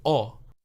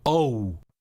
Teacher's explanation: english has diphthongs and diphthongs are two sounds to make one so they don't say o they say oh they add the ooh sound at the end of it